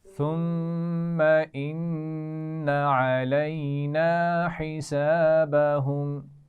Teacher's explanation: تو آپ دیکھ لیجئے ثم ان دونوں پر غنہ ہو رہا ہے شد کی وجہ سے · علینا یا لین ہے، حسابہم اس میں الف مدہ ہے اور ہا کے مخرج کا خیال رکھیں گے